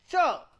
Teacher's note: tip of the tongue touches the dental region to produce the plosive part, and after the plosive, tongue is curled, the tongue is pushed back and touches the post-alveolar region to produce the friction. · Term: affricate